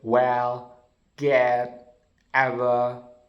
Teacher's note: the half central vowel, A, the A sounds, which is in a word well, get, ever